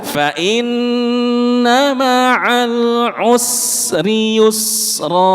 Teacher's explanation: Habiskan dulu sinnya baru rnya keluar. Gak boleh usri yusro tapi usri yusro.